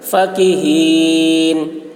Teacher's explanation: کاف کی آواز باریک، ہا کی آواز بھاری ہوگی